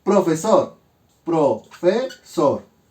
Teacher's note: yo ubico la sílaba tónica. Está en SOR. Por lo tanto, debe ser una palabra aguda.